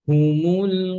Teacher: মূল যেন লাম মোটা না হয় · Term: লাম পাতলা